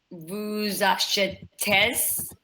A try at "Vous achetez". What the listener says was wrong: You don't pronounce the Z. Vous achetez. Vous achetez.